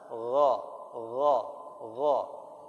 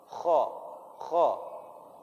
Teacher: tenggorokan paling atas itu keluarnya huruf kha dan gha